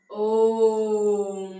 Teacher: जिसके उच्चारण में ह्रस्व स्वर से तिगुना समय लगे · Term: प्लुत स्वर